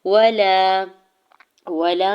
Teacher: وَلَا میں الف سے پہلے لام کے اوپر زبر ہے، الف مدہ ہو رہا ہے، دو حرکت کھینچ کے ادا کریں گے